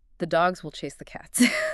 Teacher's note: I had to hit dogs, chase, and cats on the same metronome clicks. I had to physically rush through the will and the like I had to say them twice as fast to stay on the beat.